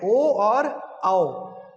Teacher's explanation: कंठोष्ठ, यानी गले से और होठों से, ओष्ठ से।